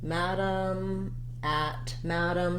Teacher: first of all the word madam has first syllable stress and it has the a black cat vowel